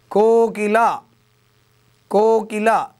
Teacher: కో అన్నప్పుడు ఎక్కువ సేపు పలుకుతున్నాం కాబట్టి అది గురువు